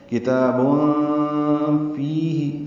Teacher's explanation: ام لکم کتاب فیہ، کاف تا بھی باریک ہے، تا کو دو حرکات لمبا بھی کرنا ہے کھڑا زبر کی وجہ سے، تنوین کے بعد فا آنے کی وجہ سے اخفا ہے۔ کتاب فیہ، فی آئے مدہ ہے، دو حرکات لمبا کریں گے، ہاں کو جلدی ادا کریں گے۔